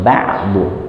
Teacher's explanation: Ba'bu, bu ya langsung ba'bu ya. Jadi dari makhraj ain yang ada di wasatul halqi langsung pindah ke bo